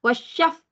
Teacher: fa sukun ataupun Fa mati ada Hamas ada angin